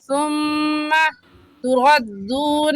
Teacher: میم مشدد ہے اور میم مشدد پر ہمیشہ غنہ ہوتا ہے، غنہ کریں گے.